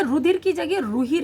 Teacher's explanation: ठीक इसी तरह से देखिए अगला क्या है कि दो स्वरों के बीच में आने वाले ध ग ध, गा घा गा और धा के स्थान पर केवल हा इस्तेमाल होने लगा।